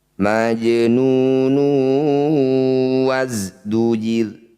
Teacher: ada dumah tanwin bertemu wau disebut bacaan Idam bunah cara bacanya bunyi dumah tanwin masukkan pada wau dengungkan dua harakat